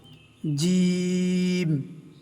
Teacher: জিহ্বার মধ্যভাগ উপরে গিয়ে লাগবে এবং শক্ত আওয়াজ হবে।